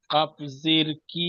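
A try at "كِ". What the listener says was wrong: কি হবে না, কি হবে না, কাপ তাজের কিত। কি টান হবে না, কাপ তাজের কিত। জবর নয়, একটু দেখে পড়েন।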